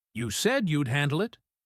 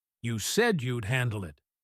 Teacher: Notice how said and handle are the strong words.